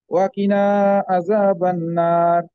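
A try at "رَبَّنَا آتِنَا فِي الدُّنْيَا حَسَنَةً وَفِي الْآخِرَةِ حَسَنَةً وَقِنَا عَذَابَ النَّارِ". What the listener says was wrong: এই যে আপনি ওয়াকিনা উচ্চারণ করছেন, এবার সেটা সুন্দর হয়েছে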